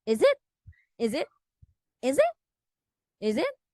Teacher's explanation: equivalent for the phrase is that so is is it and it's pronounced as a z sound instead of s